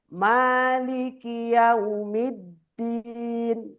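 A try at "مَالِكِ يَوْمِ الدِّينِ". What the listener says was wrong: Jangan terlalu cepat Bang, santai dikit.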